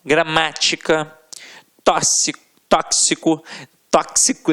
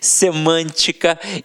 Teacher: Já nas proparoxítonas, a gente já sabe que a sílaba tônica estará na antepenúltima sílaba